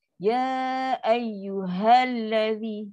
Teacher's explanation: Kalau dia sebut hamzah, maknanya dia dah melibatkan sifat khafa. Dia tak tekankan pada huruf ha. Ha ni mesti ada lepas.